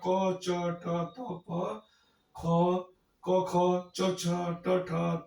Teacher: अघोष के अंतर्गत आते हैं। मतलब इनके उच्चारण करते समय हमारी स्वर तंत्रिकाएं कंपन नहीं करती, हिलती डुलती नहीं, इसको हम अघोष कहते हैं।